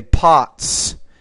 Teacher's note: because the t is a voiceless consonant so then the S will sound like an S